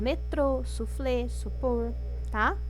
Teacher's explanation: nas palavras oxítonas a sílaba mais forte é a última